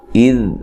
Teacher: ذال کو ہلانا نہیں ہے، نرم ادا کرنا ہے